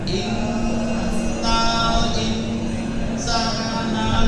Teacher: Insana berarti setelah fathah ada alif, berarti bunyi mad